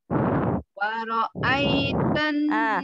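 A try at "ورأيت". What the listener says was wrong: Jangan waro'ai. Nah, berarti ro-nya belum tuntas. Huruf wau-nya juga harus monyong dulu. Waro'ai, waro, waro, waro. Bukan waro'ai.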